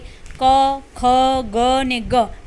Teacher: તો એ જે છે 5 વ્યંજનો એને કંઠ કહેવાય છે, કંઠ્ય કહેવાય છે, કારણ કે તે જ્યારે આપણે બોલીએ છીએ ત્યારે આપણા જીભનો પાછળનો ભાગ છે એ આપણા કંઠને અડે છે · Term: કંઠ્ય વ્યંજન